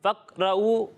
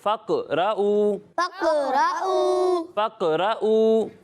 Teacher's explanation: قاف کی آواز جو ہے وہ لوٹتی ہوئی محسوس ہوگی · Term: قلقلہ